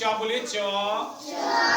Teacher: जैसे आपने च बोला, आपका जीभ जाके आपके तालु पे लड़ गया है। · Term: तालव्य